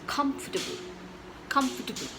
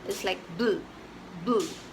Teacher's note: you stress on the first part, which is come